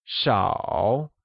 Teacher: Many translates to 多 and is pronounced using a high-level tone, while few means 少 and is pronounced using a falling rising tone